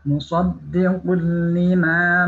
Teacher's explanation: Suara nun sukunnya dilebur ke lam tanpa dengung, ya, tidak boleh dengung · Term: bila gunnah